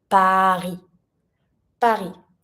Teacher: when we say Paris, we don't pronounce the S.